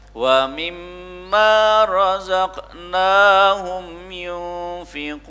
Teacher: Wa mimma razaqnahum dipantulkan karena itu termasuk huruf qalqalah, ya.